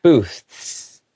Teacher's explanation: you kind of want to have your tongue to come out, but the S sound comes in quickly, so it kind of takes that TH sound out a little bit, but knowing that it's there will make that word sound a little bit more authentic.